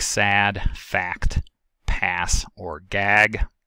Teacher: A is articulated by lowering the jaw and fronting and flattening the tongue, plus the usual closure of the nasal passage and phonation. · It is a low front lax unrounded vowel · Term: ash, ash digraph